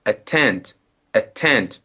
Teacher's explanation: There are two syllables and we put the stress on the second